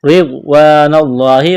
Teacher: را کو باریک کرنا ہے، را کے نیچے زیر ہے، غاد کو موٹا کرنا ہے، الف مدہ ہے، ایک الف کے برابر کھینچنا ہے، لفظ اللہ کے نام سے پہلے زبر ہے، لفظ اللہ کے نام کو موٹا کرنا ہے۔